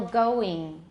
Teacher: the vowel in the English ing ending sounds more like E. So for example, going, it's not going.